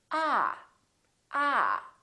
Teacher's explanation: your tongue touch your bottom teeth like this ah ah and this vowel is usually longer than most people who are non-native speakers tend to make it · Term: ah sound